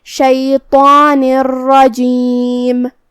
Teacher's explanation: ہمیں تنوین کو راء میں ملاتے ہوئے بغیر غنہ سے لیکن تشدید کے ساتھ یہ حکم کو ادا کرنا ہے · کلمت رجیم میں راء پہ تشدید زبر کا ہے، تو راء کا حکم ہے تفخیم، ہمیں اسے بھاری آواز میں پڑھنا ہے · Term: ادغام بغیر غنہ